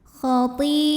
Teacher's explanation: Hamzahnya a terdapat pada kata khati'atan. Maka huruf to ini dipanjangkan, boleh 4, boleh juga 5 harokat. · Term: mad wajib muttasil